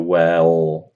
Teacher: with the tongue kind of pulling back towards the throat, and the lips being relaxed, not doing a biquinho. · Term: dark L